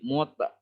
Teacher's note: Ya, tak marbutoh kalau disukunkan jadi ha. Bukan mutmainnat.